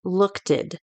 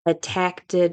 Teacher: if words are already in the past tense, like looked, someone might say lookted, and that would be the intrusive T plus the past tense